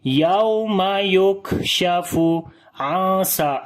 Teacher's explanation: on the kaf we make shiddat and hams, both qualities. First we make shidda, in shidda we discontinue the sound of letter like yuk, yuk, and then we release the air, yuk, yuk. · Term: shidda and hams